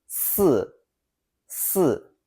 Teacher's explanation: For clarity, I will write it as 思 to help you capture the sound. With the fourth tone, it's 四, meaning four, using falling affirmative tone.